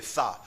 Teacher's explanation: सा में जीभ तुम्हारी तालू में टच नहीं करेगी, हवा उसके बीच से संघर्ष करते हुए प्रेशर दे रही है, ठीक है, दबाव दे रही है जीभ को, ठीक है। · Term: ऊष्म संघर्षी व्यंजन